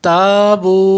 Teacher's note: تا پہ الف مدہ ہے بو پہ واو مدہ ہے اس لیے دونوں کو برابر کریں گے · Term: حروف مدہ